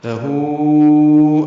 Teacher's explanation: ہو میں مد منفصل بنی ہے، الٹا پیش اور اس کے بعد دوسرے کلمے میں حمزہ، جس کی وجہ سے یہ مد منفصل بنی ہے، لہو۔